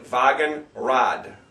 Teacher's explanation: there again you got the W but it sounds like a V